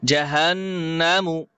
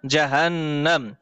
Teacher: মিম পেশ মু আর উচ্চারণ হবে না